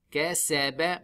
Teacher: Kasaba, make the whistle of sin. Kasaba, when we stop, we make the last letter sakin.